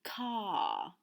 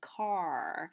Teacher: the r is pronounced less by higher social classes